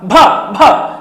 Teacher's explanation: भ बोलने में आपके होट स्पर्श कर रहे हैं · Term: ओष व्यंजन ध्वनि, ओष्ठ व्यंजन